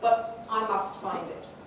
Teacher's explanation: and so the focus now is on must which gives us a contrast between negative and positive polarity really